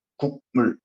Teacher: 기억은 비음이야 아니야? 비음이 아니던 친구가 비음으로 바뀌었대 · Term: 비음화